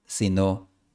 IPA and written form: ma'ðu.ɾo (Maduro)